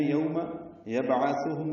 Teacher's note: یوم یبعثهم میں با ساکن پہ قلقلہ ہے